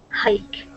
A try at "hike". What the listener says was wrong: Good, excellent job.